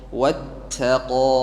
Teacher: ta tipis, wawu tipis, qaf tebal. Jadi cara bacanya watta, ta di sini tipis kan, watta, kemudian qafnya tebal kan, wattaqa.